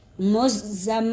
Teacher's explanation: زم پر غنہ کر دیں گے، دونوں ہونٹوں کو ملائیں گے، جنبش یہاں گدگدی سی محسوس ہوگی، مزم میلو۔ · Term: میم مشدد